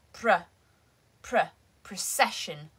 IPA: prəˈseʃ.ᵊn